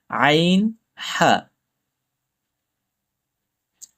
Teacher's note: ২ নম্বর মাখরাজ হলকের মধ্যখান হইতে, কণ্ঠস্বরের মধ্যখান হইতে দুটি হরফ উচ্চারিত হয়